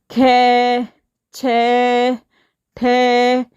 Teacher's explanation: जिन व्यंजन को उच्चारण में अधिक श्वास की मात्रा निकलती, जैसे देखो ख, छ, ठ, सब में अधिक श्वास की मात्रा निकल रही है, वे व्यंजन महाप्राण व्यंजन कहलाते हैं।